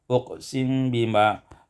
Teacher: iskanul mim ma'al ikhfa, sukunkan mim dengan ikhfa